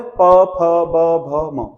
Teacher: प फ ब भ म, सब कहां? होठों से बनते हैं, इसलिए इनको बोलते हैं ओस।